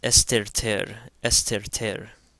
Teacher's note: the theta taking on a T sound as opposed to a TH sound, because it comes after a sema